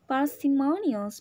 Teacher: Parsimonious ini sama juga yang P ya. Voiceless bilabial stop.